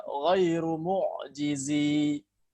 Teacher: Maka huruf ya pada huruf mad ini dihapus pada saat wasal. Adapun pada saat waqaf, maka ya-nya kembali dibaca panjang. Jadi dibaca ghairu mu'jizi, 2 harakat pada saat waqaf.